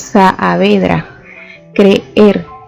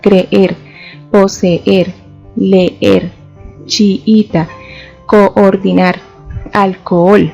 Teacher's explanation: Y también tenemos otro de los casos en los que podemos identificar que existe hiato y es cuando encontramos dos vocales iguales que requieren doble pronunciación. En este caso, las combinaciones que encontramos son AA, EE, II, OO, UU.